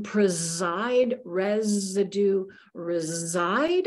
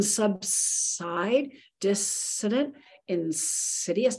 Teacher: in preside, residue, reside, I've got zzz, but look in subside, dissident, insidious, now I've got s.